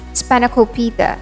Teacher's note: We stress on the third syllable, Spanakopita.